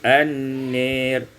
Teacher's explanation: Pada ayat yang ke-17, an-nari, imalatu fathatin nun wal alif, diimalakan fathah nun dan alif menjadi an-nir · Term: imalah